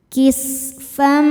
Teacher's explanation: tanwin ini masuk ke mim disertai dengung, jadi bunyi M tahan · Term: idgham bi gunnah